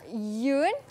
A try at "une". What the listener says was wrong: Ah, dia bukan Yun dah. Dia kalau ada E kat belakang tu bunyi dia Yun. Kalau dia U N dia hanya bunyi A. Ah, sengau sikit, hengau.